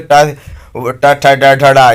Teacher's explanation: ट वर्ग ट ट ठ ड ढ ढ, इसे मूर्धा से बोले जाते हैं।